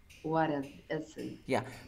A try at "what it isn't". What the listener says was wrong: Pero lo que noto es que tú haces una pausa, tú dices, what it isn't. No, no es what it isn't. Linkéame, acá hay una R. Acá hay una R.